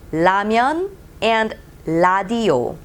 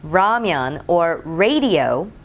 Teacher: many korean books say it has a sound of r in english but it's actually l in english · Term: l sound